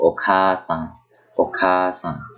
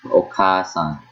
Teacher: Kept the A sound for two syllables.